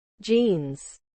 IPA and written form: dʒinz (jeans)